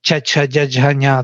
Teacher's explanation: So if I take my hand and put on my face on the side, this will be gutturals, kakha, gaghanga, these will be all the palatals, where with the middle tongue I go up